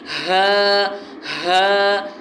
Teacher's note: ہا جو ہے تھوڑا اس میں سے آواز ہیوی نکلے گی، ہا منہ بھر کے نکلے گی